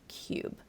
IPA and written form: kjuːb (cube)